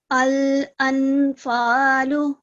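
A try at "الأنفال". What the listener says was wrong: نون کی اس آواز کو آپ نے پورا نون نہیں پڑھنا. الانفالو نہیں پڑھنا, الانفالو پڑھنا ہے.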